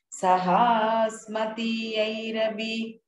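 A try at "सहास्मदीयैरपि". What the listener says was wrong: Not Mati, Madi.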